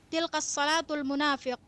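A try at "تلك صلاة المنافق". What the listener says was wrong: Tilka salatul munafiq. Nah, tilka. Jangan disambung.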